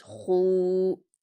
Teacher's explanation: तो आप उसको पुर भी पढ़ेंगे, हलक से भी अदा करेंगे, और वाव मद्दा है इसलिए 2 हरकत खींच कर भी पढ़ेंगे। जैसे ख्वा वाव पेश खू।